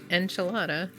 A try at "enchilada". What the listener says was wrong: You're pronouncing it like A-N-T, enchilada. It's an enchilada.